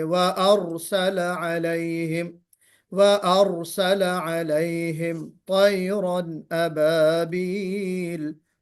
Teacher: را پہ تقریر کی صفت آنی چاہیے اور را کو موٹا کر کے بھی پڑھیں گے